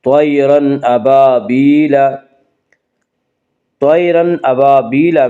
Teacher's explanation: یالین وہ یا جو ساکن اس سے پہلے زبر ہو، یالین کو نرم آواز کے ساتھ جلدی پڑھیں گے. طیرن ابابیل، طیرن ابابیل میں اظہار حلقی ہوگا.